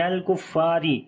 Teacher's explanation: را کو باریک پڑھیں گے, اس کے نیچے زیر ہے. · نون کو لام کے ساتھ ملائیں گے